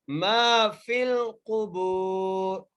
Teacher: میم کو ایک الف کی مقدار کھینچ کے پڑھیں گے, فا کو لام سے ملانا ہے